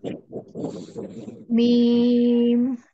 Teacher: দুই ঠোঁটার শুকনা অংশ থেকে